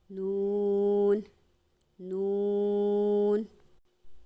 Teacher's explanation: नून कहते हुए नाक में आवाज नहीं जानी चाहिए